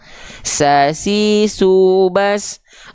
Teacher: huruf sin dia punya sifat hams Bang tapi kan dia tetap tuh hamsnya mengalir nafas